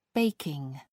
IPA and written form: ˈbeɪkɪŋ (baking)